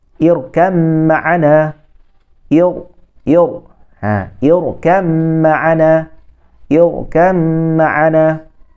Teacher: Okey, ba bertemu dengan mim. Jadi bila sebut tu, ba itu hilang bunyinya. Okey, bila saya sebut hilang bunyi itu maksudnya kita tidak membacanya.